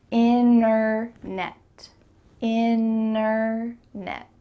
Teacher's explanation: when native speakers are speaking quickly, we're going to cut out that T completely and just say internet.